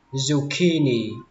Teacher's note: Âm đầu tiên các bạn xuống giọng, đến âm tiếp theo âm key thì các bạn lên giọng và xuống giọng ở âm thứ ba.